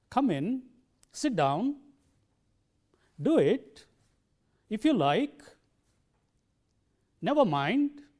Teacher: the secret of this politeness in expression is the rising tone